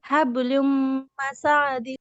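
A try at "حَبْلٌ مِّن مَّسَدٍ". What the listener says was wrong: আপু মাসা টান হবে না, মাসাদিন।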